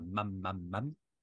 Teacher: la consonne bilabiale où on bloque les lèvres pour faire un son et le a où on a la bouche plus grande ouverte